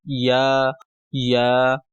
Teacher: زبان کے درمیانی حصے اور اس کو تالو کی طرف جب آپ بڑھائیں گے تو یہ یا ادا ہوگا، یعنی جہاں سے ہم نے جیم پڑھا تھا تو وہیں سے جو ہے یا بھی ادا ہوگا، یا۔